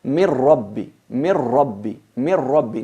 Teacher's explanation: La nun sakina y el tanwin desaparece del todo. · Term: fusión completa